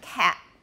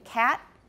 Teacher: the second one i got creaky and had a glottal stop the first one i did not